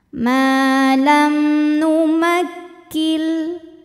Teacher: mim sukun kita bunyikan dengan izhar atau jelas m-nya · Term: izhar syafawi